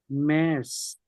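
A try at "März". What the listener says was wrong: মেয়ার্স, না? মেয়ার্স, এই তো মে, এর মতো উচ্চারণ হবে না, মেয়ার্স, তাই না? আর সেটের উচ্চারণ কিসের মতো হয় আপনার? হ্যাঁ, খ, ছ হ্যাঁ, আপনি ছ কিন্তু উচ্চারণ করতে পারেন, মেয়ার্স।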